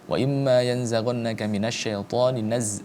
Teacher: Cara membacanya adalah ketika dalam menyebutkannya, mendengungkannya, kita sudah siap-siap untuk membaca huruf selanjutnya yakni huruf za. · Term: ikhfa